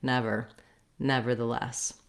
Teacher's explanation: the ver has a unstressed er sound so you still need a tight american r here